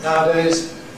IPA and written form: ˈnaədeɪz (nowadays)